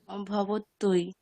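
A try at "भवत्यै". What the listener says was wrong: তৈ, ওই, তাহলে ভবতৈ যে বলছেন ওখানে কি মানে অন্তস্থ যকারটার উচ্চারণ হচ্ছেই না তো, তাহলে কিভাবে করা যেতে পারে বলুন? ভাবাত ভাবাত ইয়াই, একসঙ্গে বলুন। একসঙ্গে ভাবাত ইয়াই।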